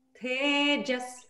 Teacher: So te is long, and then you have jas is short.